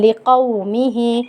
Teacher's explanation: واو ساکن سے پہلے حرف کے اوپر زبر ہے تو یہ واو لین ہے، واو لین کو ہم ایک الف کی مقدار کھینچ کر پڑھیں گے۔ می، ہا پہ چھوٹی مد ہو رہی ہے، چھوٹی مد کو ہم 4 الف کی مقدار کھینچ کے پڑھیں گے۔